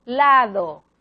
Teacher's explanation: la D es más suave, generalmente característica de medio de palabra. Por ejemplo, diente, más fuerte, lado, más débil. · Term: dental sonora